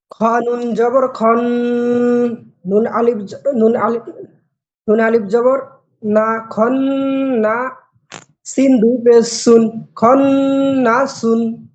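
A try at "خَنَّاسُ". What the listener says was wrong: নুনে একটু টান হবে খন্না সুন খন জবর খন নুন আলিফ জবর না সিন দুই পেশ সুন খন্না সুন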